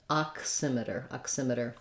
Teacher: think about the ah and the K sound going together at the beginning